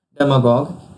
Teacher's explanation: And its pronunciation is stressed on dem syllable